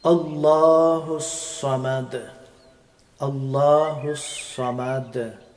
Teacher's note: The letter of Sad pronounced from tip of the tongue, passing sound through top and bottom from two teeth.